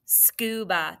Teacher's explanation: ba is an open syllable exception because that A is doing that schwa sound